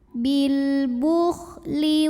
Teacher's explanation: alif lam menghadapi huruf qamariyah yaitu ba, maka lam sukun dibaca dengan jelas, izhar qamari.